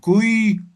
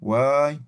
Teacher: aquí la vocal ya se convierte en consonante